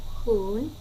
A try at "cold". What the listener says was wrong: Can we say the word again? Cold. I'm not hearing the L. Cold. With D. Cold.